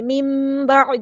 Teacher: یہاں پہ نون ساکن کی آواز کو میم کے ساتھ بدل دیں گے. میم، میم کی آواز کو گنہ کے ساتھ پڑھیں گے. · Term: اقلاب